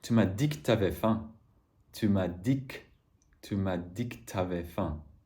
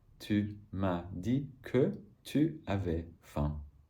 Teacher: So the que, when it doesn't have ce, also gets reduced to k very often.